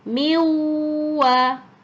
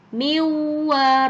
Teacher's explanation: karena sifatnya Nun itu melebur ke huruf wau maka harus nunnya dihilangkan